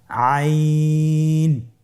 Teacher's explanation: আইন হরফটি উচ্চারণের সময় অবশ্যই তিন আলিফ টেনে পড়তে হবে। এখন আইন হরফটি বারিক হরফ।